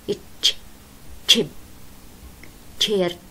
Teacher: إذا دققت باللفظ بتلاحظي إنه بيجي صوت الإت بعدين صوت الإش، إتش تشيب تشيرج إتش مهموس. · هالتي أصلاً الإت مهموس والإش مهموس، فتركيبتهن كمان طلع مهموس